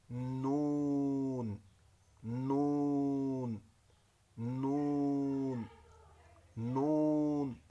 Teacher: زبان اوپر والے دانتوں کی جڑ کے ساتھ لگے گی اور دونوں ہونٹ گول ہوں گے، نون۔